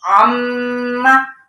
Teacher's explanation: तब मीम के ऊपर अगर तशदीद होगी तो हमने क्या करना है, उस पर गुन्ना करना है, ठीक है, थोड़ी देर यानी रुकना है, आवाज को नाक के अंदर ठहराना है